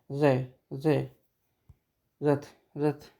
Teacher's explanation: जीभ की नोक वायु से रगड़कर कांपती हो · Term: लुंठित